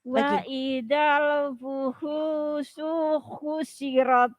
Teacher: Haknya yang pertama hu panjang. Haknya yang kedua hushi pendek.